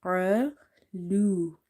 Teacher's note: So you have to read it heavy under any condition. And because of this qaf, if you see the next letter is alif, then this alif is also heavy. As well as this alif is madda because there is a fatha before it.